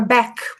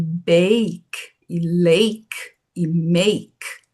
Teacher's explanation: A gente tem a palavra back, por exemplo, B a c aberto, a vogal aberta. Aqui a gente pronuncia ela fechada como em bake e lake e make.